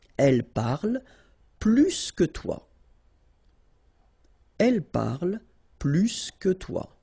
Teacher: And so the last structure, if you want to compare with a verb, then in that case, remember, plus will be with the S. So pronounce it plus que.